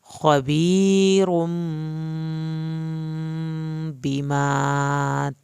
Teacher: خبیرم چھوٹی میم کے بعد با ہے، ایک الف کے برابر دیر لگائیں گے